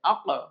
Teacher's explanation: হামজা জবর আ লাগবে কফের সাথে আক, কফ সাকিনে কলকলা প্রতিধ্বনি সৃষ্টি করে কলকলা